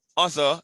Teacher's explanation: the ER is pronounced as a schwa